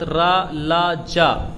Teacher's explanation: ये सभी साघोष और अल्पप्राण भी हैं और वर्तस्य भी हैं